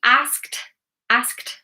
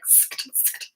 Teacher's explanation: you've got all these consonants together. It's like skt, skt. It's very, very awkward.